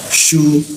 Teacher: su itu di tengah-tengah lidah ada rongga udaranya sedikit sehingga kencang hembusannya